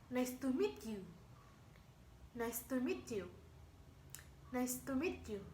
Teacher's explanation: falling intonation commonly found in the statement